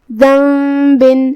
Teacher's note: حروف الاقلاب میں سے ہے، اقلاب کا معنی ہے بدل دینا، تو ہم یہاں نون ساکن کو میم میں بدل کے غنہ کے ساتھ یہ حکم کو ادا کریں گے